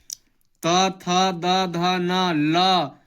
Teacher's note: त थ द ध न, ल दंती से, सब दंतय वर्ण कहलाता है